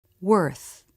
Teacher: Ending in the unvoiced TH. Again, the lips and tongue look very relaxed.